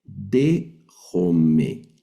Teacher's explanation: No leemos dejomai, sino que este diptongo lo vamos a pronunciar como E.